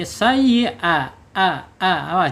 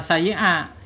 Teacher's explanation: hamzah atau hamzah ini makhrajnya ada di bawah tenggorokan. Awas ada di bawah bawah tenggorokan ya.